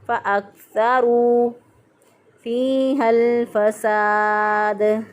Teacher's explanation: काफ पे आवाज़ को बंद करके अदा करेंगे